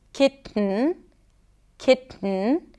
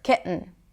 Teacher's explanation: a glottal stop can help me make the sound a little shorter and quicker. Kitten. Ki, glottal stop, and then an N, Kitten.